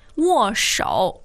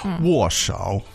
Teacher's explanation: that's a fourth tone, 握. Yeah. And 手 is a third tone.